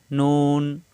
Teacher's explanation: নুনের উচ্চারণ জিহ্বার আগা উপরে তালুতে লাগবে